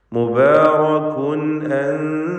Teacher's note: മുബാറകുൻ തൻവീനിനെ ഇൽഹാർ ഹൽക്കി നൽകി വെളിവാക്കണം. ശേഷം ഹംസയാണ് വന്നത് എന്നതുകൊണ്ട് മണിക്കാതെ വെളിവാക്കി തൻവീനിനെ ഉച്ചരിക്കുക.